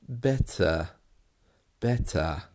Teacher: you can hear there that the letter R is almost gone